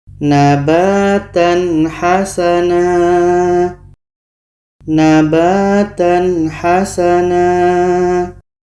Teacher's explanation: ini tanwin bertemu ha ini izhar halqi Nah kita harus baca jelas